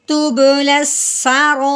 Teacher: یعنی یہ حمزہ اس مد کے ساتھ جڑا ہوا ہے، تو اس الف کو مد کو ہم نے 4 الف کے برابر لمبا کرنا ہے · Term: مد متصل